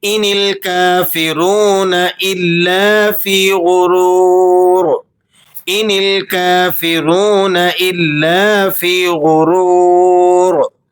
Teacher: वाव मद्दा है, इसे भी 1-2 सेकंड खींच लेंगे आप। इल्ला, लाम मुशद्दद है तो आप इसे ज़रा सख्ती के साथ पढ़ेंगे